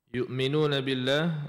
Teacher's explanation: Jaga dekat hamzahlah. Jangan tukar dengan ain.